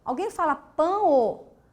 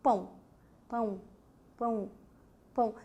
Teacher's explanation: Quando você pronuncia pão, esse O, ele não tem o som de U? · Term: semivogal